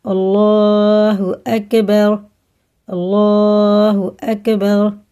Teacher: اللہ کا لام زبر اور پیش کے ساتھ ہم نے پہلے بھی بتایا پر ہوتا ہے، یعنی موٹا منہ بھر کے، اور را بھی زبر کے ساتھ اگر ہوتی ہے، رائے ساکن ہے پیچھے زبر ہے تو یہ پر پڑھا جائے گا، اور کاف باریک ہوتا ہے۔